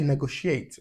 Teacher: so it's stress on the second syllable